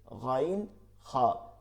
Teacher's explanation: হলকের শেষ থেকে গাইন খা, হলকের শেষ হইতে গাইন খা।